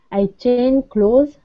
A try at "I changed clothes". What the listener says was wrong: I changed clothes. See, again, I'm telling you, my pronunciation is different because I would actually say changed. I changed clothes. I would put the j-d on clothes. J-d closed. I changed clothes.